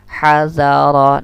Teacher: Ha ini huruf khalqi bagian tengah atau tenggorokan bagian tengah. Nah, ha ini rokhawah juga, dia berlalu sifatnya.